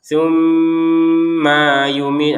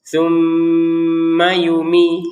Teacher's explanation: Maynya langsung nyambung ke ya jangan dipisah.